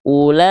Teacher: Nah, mad wajib mutasil panjangkan 5 harokat.